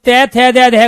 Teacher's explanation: जीभ बार बार दांतों में लग रही है और तय थे दे में हमारे दांत दिखाई दे रहे हैं, इसलिए दांतों का उच्चारण करते हैं।